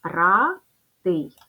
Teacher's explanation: буква а позначає звук а і попередні приголосне р - твердий